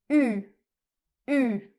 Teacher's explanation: vous allez placer la bouche comme si vous vouliez dire le son O, et en gardant la forme de la bouche, vous allez essayer de prononcer le son I. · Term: le son U